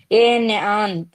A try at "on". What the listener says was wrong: అన్నిటికీ ఏ పెడితే ఎట్లయితుంది అక్క? ఆన్ అంటే యాన్ అంటే వేరు. జాగ్రత్త.